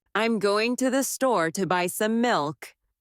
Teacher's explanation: Notice how certain words are stressed: going, store, buy, milk. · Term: stressed and unstressed syllables